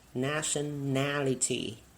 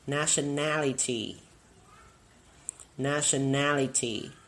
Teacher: For this word, we will stress on the third syllable.